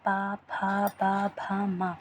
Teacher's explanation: बिना ओठ की सहायता से हम पा वाली लाइन नहीं बोल पाएंगे